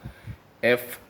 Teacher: เวลาจะออกเสียงตัวfให้นักเรียนเอาฟันบนกับริมฝีปากล่างนะครับ